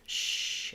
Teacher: when I'm saying the sh sound, my tongue is down, it's behind my teeth, shh, at least the front of my tongue, shh. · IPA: ʃ